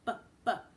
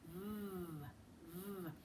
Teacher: when we say B, look, my lips are together. And it's a short sound. · My one bottom lip is under my teeth, and it's a long sound.